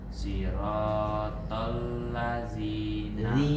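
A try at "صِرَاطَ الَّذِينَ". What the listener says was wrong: Siratal ladzi. Tipis. Enggak, masih tebal. Nih, lidahnya melet kayak gini. Masih belum. Siratal ladzi. Melet.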